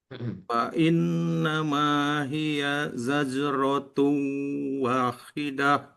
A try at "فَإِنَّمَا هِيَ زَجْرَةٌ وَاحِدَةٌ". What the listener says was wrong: Zajaratun wahidah. Wa-nya 2 harokat. Za-nya lebih dijelaskan lagi, ditekan sedikit lagi. Fa innama hiya zajaratun wahidah.